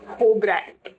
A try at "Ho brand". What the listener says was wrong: It's not a Ho brand. It's Ho brand. You have to pronounce it together. Yeah, there's no gap.